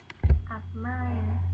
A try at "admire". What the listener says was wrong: Yeah, correct. Okay, yes. Wow, good job.